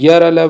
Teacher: य, र, ल, व जो है वो अंतस्थ व्यंजन है